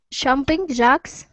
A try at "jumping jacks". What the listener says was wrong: Okay, jumping jacks. Try that J one more time. Jumping jacks.